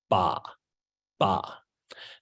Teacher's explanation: your lips open right at the same time that your voice box starts to vibrate.